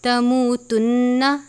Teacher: رکھنا ہے کہ لفظ کو لمبا نہیں کرنا، تموتن نہیں پڑھنا، لفظ کو روک دینا ہے لیکن غنہ کرنا ہے